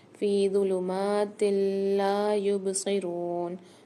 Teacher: ہم غنے کے بغیر ادغام کر کے پڑھتے ہیں، یعنی یہاں پر غنہ نہیں کریں گے، ادغام کر کے پڑھیں گے۔ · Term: ادغام بلا غنہ